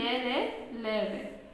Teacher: जब हम ये व्यंजन का उच्चारण करते हैं तो हमारी जो जीभ होती है वो मुंह के किसी भी भाग से पूरी तरह स्पर्श नहीं होती है